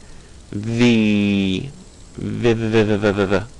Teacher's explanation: You'll find your top teeth chattering against your bottom lip.